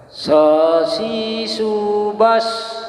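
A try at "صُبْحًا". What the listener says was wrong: Bas. Bukan bas Pak Haji, lidahnya taruh di sini. Taruh bawah.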